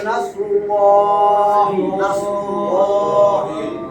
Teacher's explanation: এই যে আল্লাহর নামের ডাইনে পেশ, আল্লাহর নাম মোটা হইবে